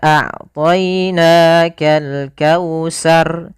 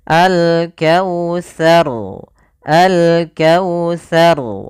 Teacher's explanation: hati-hati di dalam bacaan tsa di sini jangan dibaca dengan huruf sin jangan pakai s